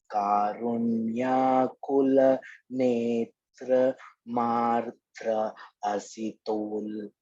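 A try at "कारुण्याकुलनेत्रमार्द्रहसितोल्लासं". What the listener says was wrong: Karunyakulanetramardrahasitollasam sunasaputam. So hasita ullasa sunasa. So ullas is the word over there. So you can't break this line. So hasitollasam, lasam makara should come.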